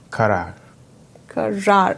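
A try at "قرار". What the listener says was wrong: Last rar is a bit exaggerated. So it has double A in it.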